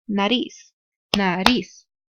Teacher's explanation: the fuerza de voz is in la última sílaba